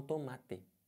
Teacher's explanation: no Sul, por exemplo, eles falam santo, eles respeitam esse O no final